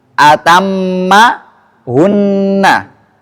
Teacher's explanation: Bacaan atammahunna nunnya ini tetap terbaca panjang dua harakat baik mimnya ataupun nunnya ketika dibaca wasal maupun waqaf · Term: dengung